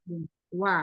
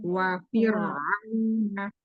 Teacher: Huruf wa mulutnya dimonyongkan ya bibirnya. Iya, disempurnakan, diminyankan dulu baru wa.